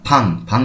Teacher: সাং বিয়োগ, দুইটি বিয়োগ একসাথে আসলে হয় প। সিঙ্গেলে যদি আসে শব্দের শুরুতে তখন আমরা এটিকে প এর মহাপ্রাণ করবো, অর্থাৎ ফাং।